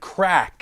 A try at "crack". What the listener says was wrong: You need to pronounce your R's better, buddy.